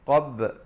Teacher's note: Qab dan ba bila qalqalah kita pepeskan mulut menghasilkan bunyi ba itu